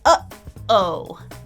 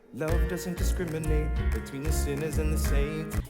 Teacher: the glottal stop sound you often find in place of a T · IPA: /ʔ/